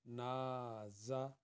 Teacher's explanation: سافارن، سافارن، نون علی زبر نا، زا زبر زا، نا زا، نون کو 2 حرکت کے برابر اور زا کو 1 حرکت کے برابر